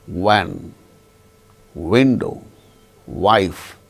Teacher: it should be pronounced with the two labial lips as the active and passive articulators lower lip active articulator upper lip passive articulator so that's why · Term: bilabial sound